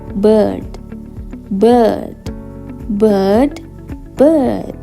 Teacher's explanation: tengah mulut sedikit terbuka seperti dalam kata bird bird bird bird jadi r-nya bisa terdengar Bisa tidak Kalau terdengar berarti American kalau tidak terdengar berarti British · Lalu jika kita menemukan simbol seperti ini, maka kita harus membacanya akan tapi karena ini ada titik duanya berarti panjang, dan cara mengucapkannya lidah di tengah, mulut sedikit terbuka